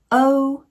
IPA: əʊ